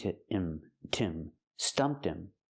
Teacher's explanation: Pronounce the t and link to him